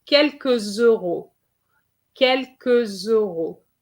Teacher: you have an S here, which you need to link to make the liaison. Okay, here, you have to make the liaison here, and it's going to give you quelques euros.